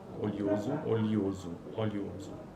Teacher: Similarmente, a pronúncia oleoso para oleoso, a palavra olhada também apresenta uma sequência de glide vogal, semivogal e vogal, seguindo a lateral, l, l. Contudo, oleoso apresenta duas pronúncias possíveis, oleoso como semivogal e vogal e oleoso com duas vogais.